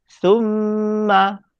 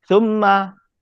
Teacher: Kalau kita baca thumma, itu salah. Sebab tak dengung. Dia nak dengung. · Kadar dengung dia dua harkat.